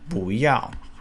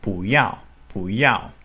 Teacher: 不, in this case, would be the second tone, followed by the fourth tone.